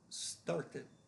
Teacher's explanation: Started ends in a T, so again, the ED is a separate syllable, and that is the id sound.